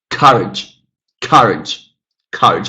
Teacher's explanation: Very clearly the first syllable is stressed here.